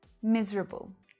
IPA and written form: 'miz rəbl (Miserable)